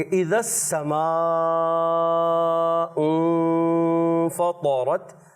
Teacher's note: मद को भी खींचना है और फिर गुन्ना भी एक अलिफ का करना है और फिर तौ को भी पूरा रखना है